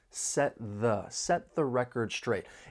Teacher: There are some overlapping sounds with the final stop t in set and the voice th in 'the'. So, your tongue is going to be behind your top front teeth, and you're just going to transition from one sound right into the next.